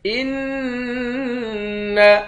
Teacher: ان حمزے کو نون مشدد کے ساتھ ملا کر نون پر غنہ کریں گے۔